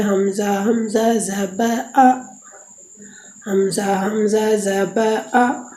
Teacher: حلق کی آخر سے جو سینے کی طرف ہے